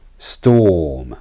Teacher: be conscious of not lifting your tongue for the ER sound